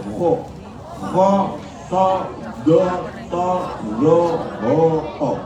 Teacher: Suaranya jadi o, itu berarti tafkhim.